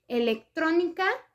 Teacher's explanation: electrónica es una palabra con sílaba tónica en la antepenúltima sílaba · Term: palabras esdrújulas